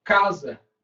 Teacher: Sílaba tônica é a penúltima, né? E terminou em A.